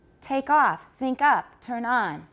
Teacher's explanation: the second one sounds more stressed than the first part right but that's because of tonic stress remember that's why the second one sounds more stressed but the